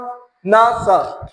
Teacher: जब हम न का उच्चारण करते थे तो हमारी जीभ दांत को टच होती थी, और स का भी करते थे तब भी दांत को टच होती थी।